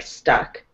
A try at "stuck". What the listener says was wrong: I don't know how else to explain it except that the vowel just sounds like a little bit off.